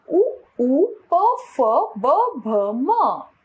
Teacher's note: उच्चारण ओष्ठ, स्थान दोनों ओठों से।